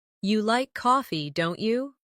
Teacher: making your voice rise slightly at the end of the tag question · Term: tag questions